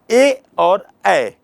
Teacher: ए और ऐ ये कंठ तालु से उच्चरित होते हैं